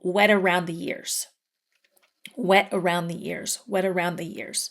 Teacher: Now, if I'm going to end my sentence with the word wet, I'll say the T, wet. If I have other words after the word wet, I won't say the T.